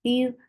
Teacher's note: Hatta, you keep ya very soft. You're lifting your tongue up to the palate, but it's not touching it. That is making ya very soft.